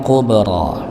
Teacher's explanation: di sini ada huruf ba maka dipantulkan ya dengan sughra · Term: Qalqalah kecil